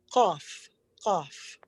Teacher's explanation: This is the letter Qaf, Qaf. Kind of like a Q, but it starts in the back of your throat. We don't really have that sound in English.